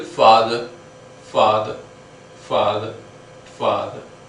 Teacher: Though there is R, but that R is not sounded, it is simply father